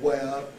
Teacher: the back of the tongue rises towards the soft palate. So this part of the tongue then rises up in that direction towards the soft palate. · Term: semi-vowel